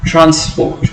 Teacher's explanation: if you are using it as a noun, you have to put the stress on the first syllable.